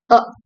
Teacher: அ is அ short central அன்ரவுண்டட் வவல். நம்ம அதெல்லாம் பார்த்திருப்போம் இல்லையா, அன்ரவுண்டட் வவல். · The tongue is positioned near centrally in the mouth. இதுல பாத்தீங்கன்னா சென்ட்ரல் பார்ட் ஆஃப் த மவுத்ல தான் அந்த டங்கோட பொசிஷன் இருக்கும். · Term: ஷார்ட் சென்ட்ரல் வவல்